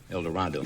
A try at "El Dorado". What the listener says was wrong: No, El Dorado. Pronounced with long A.